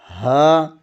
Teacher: اقصی حلق سینے کی طرف والے حصے سے ہا ادا ہوتا ہے